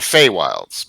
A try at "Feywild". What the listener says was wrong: No S.